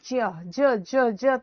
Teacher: तो हम कहेंगे ज बोला जाता है तालु से।